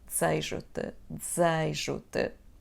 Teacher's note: we have de and then z in the next syllable. When we pronounce them quickly, one next to another, it sounds like z